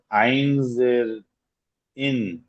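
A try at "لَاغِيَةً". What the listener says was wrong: ওটা আইন নয়। হ্যাঁ, গাইন জের গি, লাগি।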